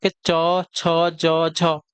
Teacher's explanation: तालव्य व्यंजन च छ ज झ आपका ताल व्यंजन कहलाते